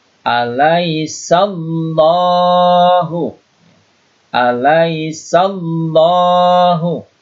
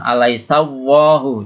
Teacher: Ini adalah lafdzul jalalah, ya. Tafkhim atau tebal, ya, karena diawali dengan fathah di sini.